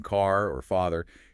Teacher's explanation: You really have to train the muscles for that long a sound like in car or father, you need that wide open a sound